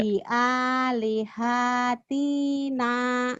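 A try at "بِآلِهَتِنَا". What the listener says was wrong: Nggak ada yang panjang. Panjangnya A sama Na doang.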